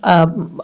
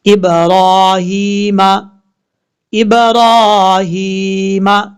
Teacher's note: را کے اوپر کھڑا زبر ہے، اس کو ایک الف کی مقدار لمبا کریں گے